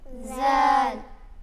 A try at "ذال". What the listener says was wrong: یہ زا نہیں پڑھیں گے اس کو، بلکہ ذال پڑھیں گے۔ ذال